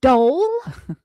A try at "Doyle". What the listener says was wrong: Doyle. You said dough. You said dough whip. Because the way you said it, you said dough whip. And I thought she said like dough whip.